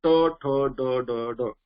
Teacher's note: जिभेचं जे टोक जे आहे, टीप जे आहे, ती आपण त्या जो उंचवटा भाग जो आलेला आहे त्याला एकदम जोरात प्रेस करतो आणि ध्वनी काढत असतो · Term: मुद्धज